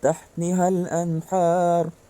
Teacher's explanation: ada nun sukun bertemu ha. Maka cara bacaan jelas. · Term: idhar halki